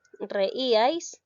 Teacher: la mayor fuerza de voz lleva en la sílaba I. Es una palabra grave.